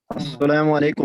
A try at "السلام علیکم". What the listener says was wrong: پتہ نہ آپ نے سلام ٹھیک نہیں کیا. عین کو نکالے گا.